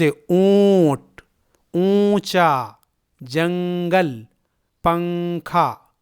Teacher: جواب: نون ساکن یا تنوین پڑھتے وقت زبان کی نوک تالو سے لگ جاتی ہے، یعنی چپک جاتی ہے، لیکن اخفا کرتے وقت زبان کی نوک تالو سے نہیں لگتی ہے اور باقی آواز ناک کی جڑ کی طرف جاتی ہے، جیسے لفظ اونٹ، اونچا، جنگل، پنکھا وغیرہ میں نون کی آواز کو ناک میں چھپا کر پڑھا جاتا ہے۔ آپ لفظ اونٹ کو دیکھیے، اس میں یہ نون ہے، لیکن ہم اسے پورا نون نہیں پڑھتے ہیں بلکہ آدھے نون کی آواز نکالتے ہیں۔